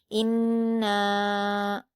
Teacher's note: بھی مد منفصل ہے، 4 حرکات کے برابر نون کو کھینچ کر پڑھیں گے ، ان، اور ایک الف کے برابر غنہ بھی کریں گے،